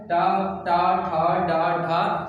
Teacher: आपकी जो जीवा होगी वो आपके तालु के पश्च भाग को क्या करेगी, स्पर्श करेगी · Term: मूर्धा